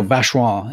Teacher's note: to say it like a native, you can actually drop an extra syllable from Vacheron. You just go Vacheron instead of Vacheron.